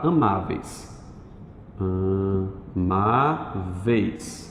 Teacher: Do E para o I é decrescente. Ditongo decrescente.